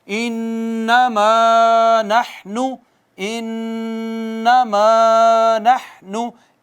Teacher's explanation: इन्नमा नहनु, इन्नमा नहनु, इन्ना पे क्यों रुके और क्या किया, गुन्ना किया है हमने, नून मुशद्दद मीम मुशद्दद पर गुन्ना होता है